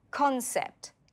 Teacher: The stress is on con.